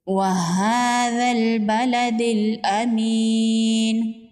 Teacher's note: کھڑی زبر ہے، ایک الف کے برابر کھینچ کے پڑھیں گے، غال کو نرمی سے پڑھیں گے۔